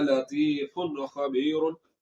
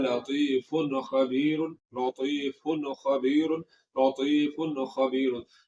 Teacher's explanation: गुन्ना नहीं होगा, यानी कि आवाज को नाक में नहीं ले जाना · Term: इजहार